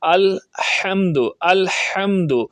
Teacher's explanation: اور ہا جو ہے حلق کے درمیان والے حصے سے نکالی جاتی ہے۔